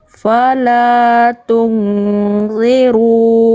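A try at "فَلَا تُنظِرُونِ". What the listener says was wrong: Nah, itu.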